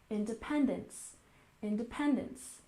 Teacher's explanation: independence, with a stress on the third syllable